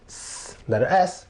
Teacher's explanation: the S sound is voiceless. That means your voice is not being used. It's like you're just moving air. So the S is voiceless, like S, voiceless, no voice, just S.